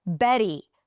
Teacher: the flap T in the middle, Betty, all of them can be pronounced with a regular T.